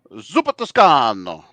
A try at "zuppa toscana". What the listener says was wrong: It's Toscana, not O. A at the end. So I guess the soup is female. Toscana. Zuppa Toscana.